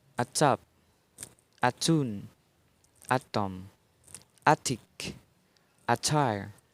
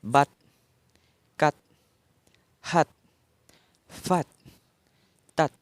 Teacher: voiceless alveolar stop. Initial.